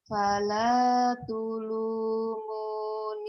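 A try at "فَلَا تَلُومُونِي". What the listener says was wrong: Kok pala tulung? Tulung. Itu barisnya bukan doma. Fala talumuni walumu.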